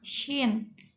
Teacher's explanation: Sin selanjutnya syin selanjutnya huruf syin yaitu ee bunyi langit-langit tengah syin ikhtiak maksudnya ke geseran mahmus dia juga tidak ada getaran